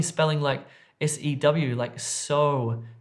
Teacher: if you have a word like loan, often it can sound like lon. So try to extend that O sound out.